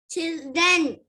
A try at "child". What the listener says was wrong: No. C-H-I-L-D. Only that much is there. So how would you read that? Child. It is to be read as child, not chilled. Child. Child.